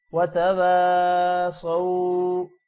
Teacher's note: وتواصوا صاد موٹا ہوگا اور واو کے ساتھ جب ملے گا تھوڑا سا لمبا کریں گے. وتواصوا اب واو کے بعد الف آ رہا ہے تو واو بھی الف کی وجہ سے لمبا ہوگا